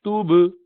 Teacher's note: قلقلہ کا مطلب کہ وہ ہر ذرا ریباؤنڈ کر کے نکالتے ہیں. تب میں زبان دونوں ہونٹ آپس میں ٹکراتے ہیں نا، تب، تو اب توب اس کو توب کر دیتے.